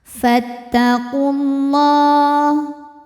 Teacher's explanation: Selanjutnya alif lam dinamakan dengan alif lam syamsiyah karena alif lam menghadapi huruf syamsiyah yaitu lam juga. Maka alif lam tidak perlu dibaca, jadi langsung tempel ke lam berikutnya.